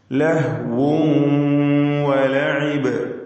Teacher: വാവ് രണ്ട് ചുണ്ടുകളിൽ നിന്ന് തന്നെ ഉച്ചരിക്കുവാൻ പ്രത്യേകം ശ്രദ്ധിക്കുക.